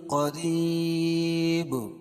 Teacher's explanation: قریب را باریک پڑھی جائے گی، کیوں؟ را کے نیچے زیر ہے، اور یا ساکن سے پہلے را کے نیچے زیر ہے تو یا مدہ، اور وقفہ کی صورت میں دو پیش کی تنوین کو جزم سے بدل دیں گے تو یا مد عارض وقفی ہوگا۔